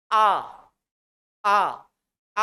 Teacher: आ पीछे पड़ रहा है प्रेशर। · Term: पश्च स्वर